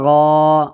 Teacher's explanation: خڑا زبر کو ایک الف کے برابر کھینچ کر کے ادا کریں گے